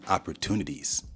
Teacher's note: he said the word opportunities with a D instead of a T